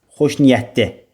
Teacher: Ona görə xoş niyyətli sözündə sadəcə l d ilə əvəz olunur. Xoş niyyətli belə bir versiya yaranır.